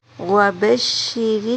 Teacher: را کو نرمی سے پڑھا جائے گا